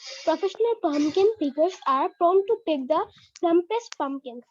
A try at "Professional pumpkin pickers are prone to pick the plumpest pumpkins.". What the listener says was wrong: হ্যাঁ, তাও পিতে কিছু সমস্যা হচ্ছে, বাট স্টিল সমস্যা নেই, আমরা আস্তে আস্তে শিখে যাব। এখন থেকে এভাবে উচ্চারণ করলে দেন it will be easy for you.